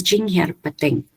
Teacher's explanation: So here too, we have a kind of, the final and the initial syllable have stress. So the final is primary and the initial syllable is a secondary stress. Here and pad receive no stress.